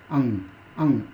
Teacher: अं को हम अनुस्वार में रखते हैं इसलिए क्योंकि इसके उच्चारण में नाक का प्रयोग होता है